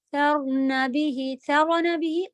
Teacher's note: قلقلہ بالکل نہیں آنے دینا ہے رو میں